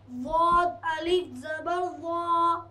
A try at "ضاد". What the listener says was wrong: آپ زبان آگے بتاتے ہیں زبان سنو ادھر زبان داڑھ میں داڑھ جو جس سے ہم چباتے ہیں نا وہاں پر زبان کا کنارہ لگے گا. ضاد الف زبر ضا